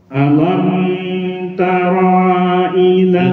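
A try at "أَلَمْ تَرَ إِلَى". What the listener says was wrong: Rohnya pendek.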